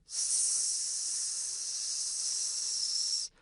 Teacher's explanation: Notice how it sounds kind of whispered? This is characteristic of a voiceless sound. Now, contrast this with the sound z. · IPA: [s]